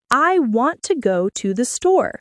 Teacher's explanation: In this sentence, want and store are stressed. The other words are softer and quicker. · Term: Sentence stress